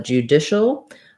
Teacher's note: Finally, the AL is a dark L sound at the end.